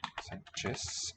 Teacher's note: it's a letter z but an s sound voiceless